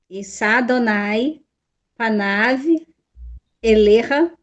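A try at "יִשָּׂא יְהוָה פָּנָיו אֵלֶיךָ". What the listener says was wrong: Igualzinho o outro, viu? Issá, Adonai, Panav, Eleha. Exatamente.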